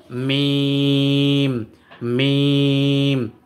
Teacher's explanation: দুই ঠোঁটের শুকনো জায়গা হইতে উচ্চারিত হয় মিম